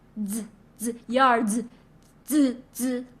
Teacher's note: The only thing you need to worry about is the English letter Z, which is pronounced as DS.